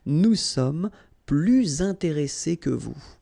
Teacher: you make this little link, little liaison between the two, so you hear a little bit this S.